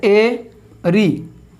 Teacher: इनके उच्चारण के समय में संवृत से थोड़ा ज़्यादा मुख खुलता है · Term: अर्ध संवृत